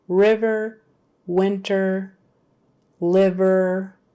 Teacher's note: even if that first syllable is a stressed syllable like liver winter River and those words we are still making a short vowel